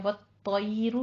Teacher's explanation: व तयरू में हमारा ता पुर पढ़ा जाएगा और ता पे तशदीद भी है, इसको भी पुर पढ़ना है।